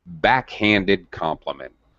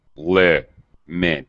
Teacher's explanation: You have that secondary low pitch.